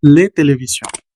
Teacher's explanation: Recuerden que la s final no suena.